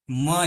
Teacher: મ જેવું બોલીએ એટલે તરત આપણા હોઠ બંધ થઈ જશે ઓષ્ઠ છે પ્લસ નાસિકા છે